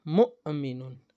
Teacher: جب حمزہ پر سکون آ جائے تو پھر اس کو پڑھنے میں کیا ہوگا، جھٹکا لگایا جائے گا